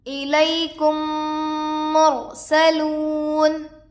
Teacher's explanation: میم کو میم سے ملا کر گنہ کے ساتھ پڑھا جائے گا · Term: ادغام شفوی